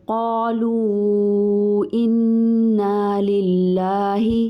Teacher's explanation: قالو اور میں قاف اور الف دونوں کو موٹا کریں گے